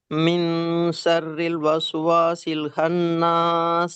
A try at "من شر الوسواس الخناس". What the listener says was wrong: ஹா வரணும். வஸ்வசில் ஹன்னாஸ். இந்த ஹால நல்லா பிராக்டிஸ் பண்ணுங்க. வஸ்வசில் காரி சொல்லணும். ஹன்னாஸ்.